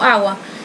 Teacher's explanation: Com exemplos de G, que eu falei que ia dar para vocês, a palavra água, né, o G aí é forte, né, mas há pessoas que pronunciam água e quase não sai o G